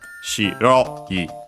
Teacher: the accent is the same as for accented adjective, so second to last syllables on the ro, shi, ro, I, low, high, low.